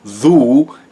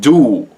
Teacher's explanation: It's just on the continent you had something called the High German consonant shift. And so a lot of TH sounds became D